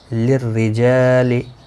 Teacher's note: للرجال را زیر کی وجہ سے باریک پڑھا جائے گا. جا الف مدہ ہے، ایک الف کی مقدار کے برابر کھینچ کر پڑھیں گے